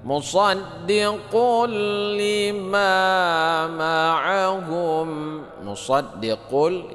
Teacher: ini adalah idgham bila ghunnah ya, dibaca tidak berdengung seperti bertasydid saja ya. Lima ma'ahum, lima ini adalah mad tabi'i panjang dua harakat.